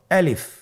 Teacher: আলিফ হরফটি মাখরাজ হলো আপনার মুখের শূন্যস্থান থেকে। গলা এবং মুখের শূন্যস্থান হতে আলিফ হরফটি উচ্চারিত হয়